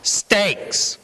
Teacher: There's a ever so slight puff of air after sta that hits your hand.